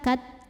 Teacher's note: Huruf ta dari segi suaranya kuat ya, tertahan saat kita menekan ke makhrajnya. Tapi dari segi anginnya itu keluar hams. Jadi dari segi suara tertahan syiddah kat, dari segi angin hams keluar angin kat.